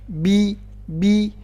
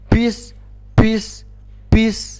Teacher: nggak boleh ada suara p, nggak boleh ada angin yang keluar. Jadi bukan pis ya.